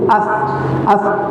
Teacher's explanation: dai fu af shine batsanin shafati sufla ma'a atrafi thanaya al-ulya haƙoran gaba su da su danne leɗen ƙasa af tare da fitan iska